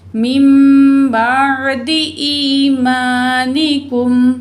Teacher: हमज़ा ज़ेर या, ई या साकिन माँ कबल ज़ेर या मद 2 पॉइंट खींच के पढ़ेंगे।